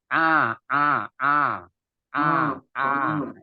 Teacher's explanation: a iya a a baruu lari baru lari ke Ain Ain Ain itu tempatnya itu di tengah-tengah tenggorokan